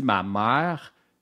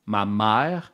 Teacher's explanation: donc quand je dis ma mère c'est comme si je rajoutais un petit a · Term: diphtongaison